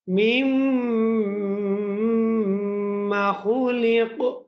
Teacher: মিমের উপরে যদি তাসদীদ আসে তাহলে সেই মিমকে ওয়াজিব গুন্না করতে হয়।